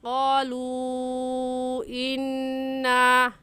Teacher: इस मद को 3 अलिफ़ के बराबर खींच कर पढ़ेंगे, ना इससे कम और ना ही इससे ज़्यादा। ऐसे कहेंगे क़ालू इन्ना। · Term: मद्दे मुनफसिल